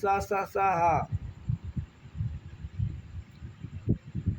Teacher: हवा मुंह में रगड़ खाकर ऊष्मा गर्मी घर्षण पैदा करती है। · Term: उष्ण संघर्षी व्यंजन, संघर्षी व्यंजन